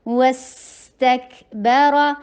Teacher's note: والسین پہ رخاوا کیجئے، لائٹ رکھیے اور وسل کی ساؤنڈ دیجئے